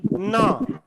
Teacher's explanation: जहां पे दांत जुड़े हुए हैं मसूड़ों से, जीभ वहां पे स्पर्श करती है। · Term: वर्ष ध्वनि